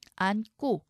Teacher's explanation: 안에서 지금 니은이 남고 뒤에 고가 된소리, 쌍기역으로 바뀝니다.